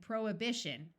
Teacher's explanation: the root prohibit has the H pronounced but once you add the shun the H sound disappears